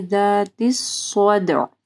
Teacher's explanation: ذال جب آپ پڑھیں گے آپ کی زبان کی نوک اوپر کے دو دانتوں کے پاس آئے گی۔ ذات الصدع، صاد کو ہیوی پڑھنا ہے، صدع دال کے اوپر کلکلا ہوگا اور عین کو واضح پڑھنا ہے۔